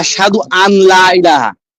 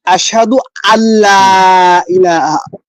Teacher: অনেকে বলে এরকম যে আশহাদু আন লা ইলাহা, কিন্তু আনটা এই নুন সাকিনের পরে লাম আসছে, লাম ইদগামের হরফ, এখন এই হামজা লামের সাথে মিলবে, নুনটা বাদ হয়ে যাবে।